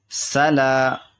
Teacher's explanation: یہ سین حروف صفیریہ میں سے ہے جن میں سیٹی والی آواز نکلتی ہے